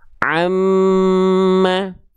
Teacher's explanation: nun dan mim suaranya mengalir ke hidung. Nah, ini makhraj kedua dari huruf nun dan mim. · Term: gunah